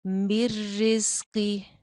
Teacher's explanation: قاف موٹا ہے، زا کے اندر سیٹی ہے